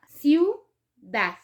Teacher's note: Aquí hay dos vocales débiles y por lo tanto se forma un diptongo, que son las dos vocales dentro de una misma sílaba.